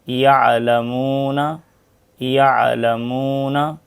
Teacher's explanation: عین کی آواز نرم، سافٹ اور بغیر جھٹکے کی ہوتی ہے